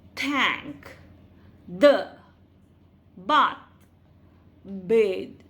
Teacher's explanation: the front part of tongue touches behind the upper teeth while producing the sound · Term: dental fricatives